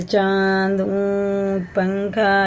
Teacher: الف کے برابر ناکوں میں چھپا کر پڑھنا